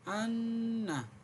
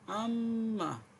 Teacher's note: নাকের বাসি হইতে গুন্না উচ্চারিত হয়